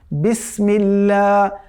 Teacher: তো সিন এটি খুবই পাতলা হবে